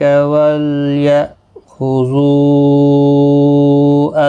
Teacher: حمزہ ساکن کو جھٹکے کے ساتھ پڑھیں گے